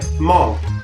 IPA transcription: ˈmɔŋ